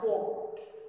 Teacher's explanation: So this word is pronounced as folk. L sound doesn't come in between because between those two letters there is no sound. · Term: remains silent